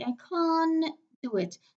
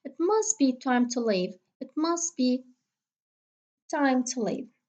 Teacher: If you remember the rule as mentioned in the definition of elision, usually it occurs. We delete the sound when we have a consonant cluster, three, four, whatever. So the middle t in this consonant cluster will be elided. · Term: elision of t sounds